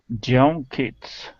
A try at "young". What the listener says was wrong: with the Y you're pronouncing a Spanish y saying j instead of Jung it start off with an e sound